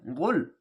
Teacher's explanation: মোটা করে গলা চিপে গাইন